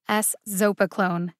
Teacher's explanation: There are four syllables in Eszopiclone. The emphasis is on the second syllable, zo.